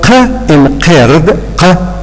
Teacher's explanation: this is formed by the narrowing of the vocal tract at the uvula. And so words which are produced at that particular point are called uvular consonants.